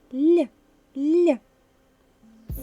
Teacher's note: наступний звук ми вимовляємо м'яку ль це М'який приголосний